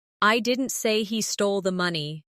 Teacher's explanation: In the first one, the stress is on I, meaning maybe someone else said it.